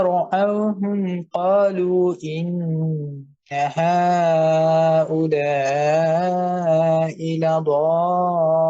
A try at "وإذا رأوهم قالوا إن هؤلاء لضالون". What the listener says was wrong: সুন্দর হয়েছে, কিন্তু এখানে কলুর মাদটা স্কিপ হয়ে গেছে, এটা যেন স্কিপ না হয়, খেয়াল করবেন। হ্যাঁ, মাদ স্কিপ করা যাবে না।